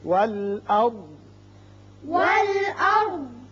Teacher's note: یہاں ضاد ساکن ہو جائے گا اس لیے کہ یہاں علامت وقف مطلق کی ہے. یہاں وقف کریں گے.